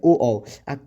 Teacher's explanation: कंठोष्ठ, कंठ और ओठ के मेल से बोलते हैं